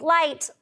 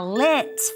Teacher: change that long I vowel in the middle to a short I